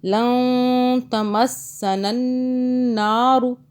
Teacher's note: یہاں پہ اخفا قاعدہ آ رہا ہے کیونکہ اس نون ساکن کے آگے تا ہے، اخفا کا حرف۔ نون کو چھپا کے پڑھیں گے، زبان تالو سے ٹچ نہیں کریں گے۔ لن تمسنا النار، یہ جو ہے نون مشدد کا قاعدہ ہے، ٹھیک ہے، یہاں بھی غنہ ہوگا۔